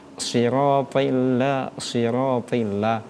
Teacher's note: Kita bahas di awal tadi sifatnya itu shofir. Ketika penyebutan huruf sh salah satunya keluar desisan.